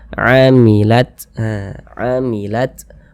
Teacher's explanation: memiliki sifat Hamas jadi ada nafas yang mengalir